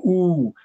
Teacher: where the lips are really folded and it's long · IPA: uː